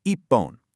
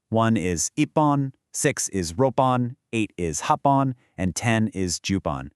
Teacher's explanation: It becomes ippon. Notice that strong double P sound?